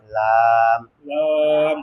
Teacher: জিহ্বার আগার কিনারা, সামনের উপরে সামনের উপরে দাঁতের মাড়ির সঙ্গে লাগাইয়া